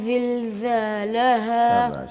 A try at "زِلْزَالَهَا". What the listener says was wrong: میں دیکھ رہا ہوں آپ کی جو زبان ہے وہ نظر آتی ہے. زا بولتے وقت زبان کبھی نظر نہیں آتی، دانت نظر آتے ہیں، زبان نظر نہیں آتی. دانتوں کو بند کریں، زبان پیچھے کریں، تو پھر یہ اور کلیئر ہو جائے گا.